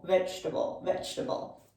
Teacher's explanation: So we go right from the J to the T.